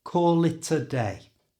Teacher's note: To say this naturally, change the A to a schwa sound, that's that little that's really common in English, and move the T from the end of it to the front of that schwa sound.